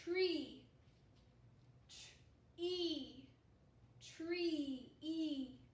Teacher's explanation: the e on top to show with its long sound and it's all stretched out it's saying its name making the long sound